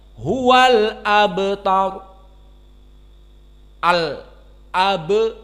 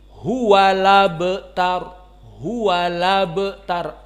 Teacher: Adapun qiraah yang lain, qiraah Wars an Nafi', maka dibaca dengan hamzahnya dihilangkan, dipindahkan kepada lam.